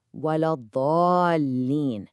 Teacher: I want you to really zoom in on that long ah sound in dhalin. This isn't just your average long vowel.